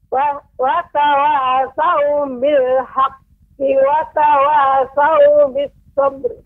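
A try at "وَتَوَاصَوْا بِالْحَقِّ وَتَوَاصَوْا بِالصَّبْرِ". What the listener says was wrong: Sadnya lebih ditambah lagi Ibu, desisnya bis sabr. Bis sabr.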